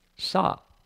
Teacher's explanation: fourth tone, falling tone